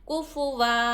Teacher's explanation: सिर्फ वक्फ की जगह ही, जब हम सांस तोड़ेंगे रुकेंगे, तो जब दो ज़बर पर जब हम रुकेंगे ना, तो दो ज़बर पर एक ज़बर के साथ अलिफ पढ़कर हम वक्फ करेंगे, रुकेंगे, ठहरेंगे। कुफू वन काफ पेश कु फा पेश फू कुफू वाउ दो ज़बर वन कुफू वन।